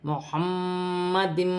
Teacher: میم مشدد میں غنہ بھی کیا جا رہا ہے اور تنوین میں بھی غنہ کیا جا رہا ہے